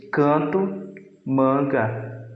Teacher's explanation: sons nasalizados, que o ar sai pela boca e nariz ao mesmo tempo quando o palato está parcialmente abaixado.